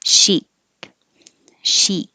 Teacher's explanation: And it does have a K sound at the end, but we just put the tongue in the K position and don't release it unless the next word begins with a vowel